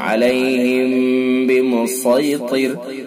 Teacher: देखिए मीम साकिन है और उसके बाद बा है। मीम साकिन के बाद अगर बा होता है तो इख्फा मीम साकिन होता है, इसको इख्फा शफवी कहा जाता है। इसके अंदर भी गुन्ना होता है